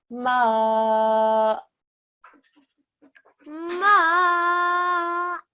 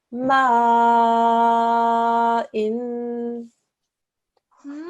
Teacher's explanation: It's all coming out, but you want to stop the sound, so you just suddenly close your throat, and that's how to make that lovely, sharp jerk sound on a hamza sakin